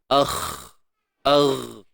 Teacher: Dia bukan bersifat syiddah, dia bersifat rakhawah. Huruf kha, agh.